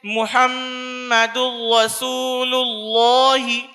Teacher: تنوین کی آواز کو بعد والے حرف سے ملا کر بغیر گنہ کے پڑھیں گے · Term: ادغام تام